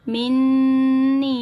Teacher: میم نون، اب یہاں پہ دیکھیے گا نون مشدد کا گنہ کریں گے اور یا مدہ کو کھینچیں گے، ان دونوں کو ہم ایک الف کی مقدار کھینچ کے پڑھیں گے